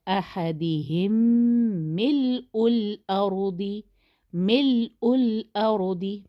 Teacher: یہ میم کے اوپر شدہ ہے کیونکہ شدہ اسی وجہ سے ہے کہ ادغام ہو رہا ہے، تو ہم اس کو غنہ کے ساتھ پڑھیں گے